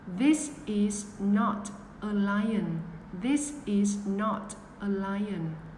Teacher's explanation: This lè lưỡi rụt vào.